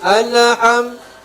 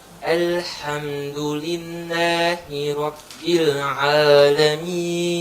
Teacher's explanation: jangan mendobelkan, jangan memantulkan huruf lam mati. Jadi tidak boleh dibaca alham, tapi dimatikan secara sempurna. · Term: sukun mahdhah